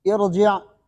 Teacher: زیر عارضی ہے تو یہاں پر را موٹی پڑھیں گے